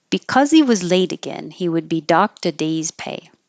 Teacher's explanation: we can get rid of the H and connect the final consonant of the previous word over. And because ends with a Z, that's what you will hear connecting.